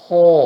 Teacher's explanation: Ya, tenggorokan bagian atas. Secara detailnya, akar lidah bertemu dengan langit lunak.